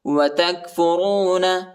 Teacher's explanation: کاف کو موٹا نہیں پڑھیں گے، ہلکا پڑھیں گے، یہ چھوٹا کاف ہے